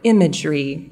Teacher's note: making sure to place that stress on the first syllable